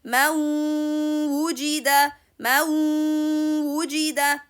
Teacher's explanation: The waw sound is not having by origin a ghunna sound. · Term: incomplete insertion